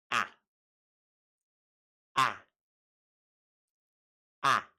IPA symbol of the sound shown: æ